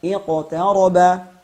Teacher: huruf qaf adalah satu-satunya huruf isti'la yang dimana ia tidak memiliki sifat idbaq, tapi memiliki dua sifat kuat, yaitu jahar dan syiddah